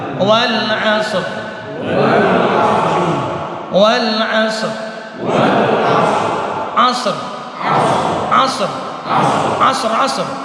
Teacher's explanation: Intinya dua-duanya mati. Sod mati, rohnya mati. Cuman rohnya jadi tebal. Alasannya karena sebelum roh mati ada huruf sod, sukun, dan sebelum huruf sod sukun ada huruf ain yang berbaris fathah. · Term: roh tebal